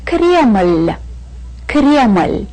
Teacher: The word Kreml also ends in the soft sign. We put the soft sign here to show that this L is a very light sound.